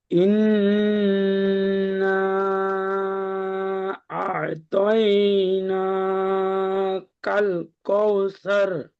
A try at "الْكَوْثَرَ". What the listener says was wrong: কৌসার হবে না, আমরা পড়েছি কাফ ও জাবার কাউ।